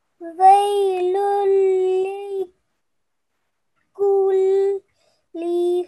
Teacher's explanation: we have the tanween of noon followed by Lam Mushaddad. So we are going to not make any nasal sound. Okay, we will take 1 stroke of the Tanween. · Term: idgham kamil